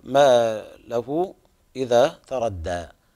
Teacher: هنا مد صلة كبرى تمد بمقدار 4 أو 5 حركات